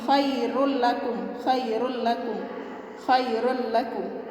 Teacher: Jadi kalau bila gunnah itu tidak didengung, cara bacanya gini, khairul lakum ya. Tetap dia bertasydid tapi tidak didengung ya. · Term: idgham bila gunnah